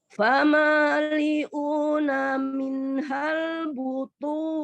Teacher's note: nun sukun bertemu dengan huruf hanya izhar ya, dibaca jelas tapi dia sempurna nunnya sesuai dengan makhrajnya. Minhal ya, agak ada penekanan di ujung lidahnya.